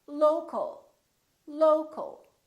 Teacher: for example we stress the first syllable here low low but we don't say low Kyle or low cal we reduce the second syllable